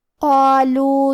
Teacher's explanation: کلمت قالوا میں قاف کو اور مد الف کو دونوں کو بھاری آواز میں پڑھیں گے